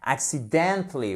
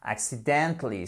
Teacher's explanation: vous avez une petite accent tonique ici au début, donc un petit accent, et ensuite vous avez un accent tonique majeur sur le dently